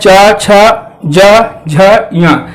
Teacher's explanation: चा छ जा झ या, यहाँ पे हम देखते हैं जो हमारी जबान है, जो हमारे जो दांत के ऊपर प्लेट है उसमें हमारी जबान जाके टकराती है, जैसे चा। अब देखिए हमारी जबान का अगला भाग जो होता है वो जाके ऊपर टकरा रहा है, च छ ज झ। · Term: तालव्य